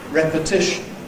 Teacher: Because of the general rule in English that you can't have two thoroughly unstressed syllables at the beginning of a word, you've got to have secondary stress on the first syllable. Therefore it gets the vowel e